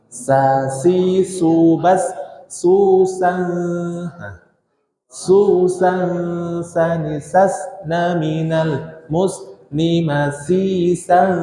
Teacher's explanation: sini ada nun sukun ketemu yang manauk nya adalah ikhfa Hakiki maka kita baca nun sukun atau tanwinnya itu samar-samar ditahan dua harakat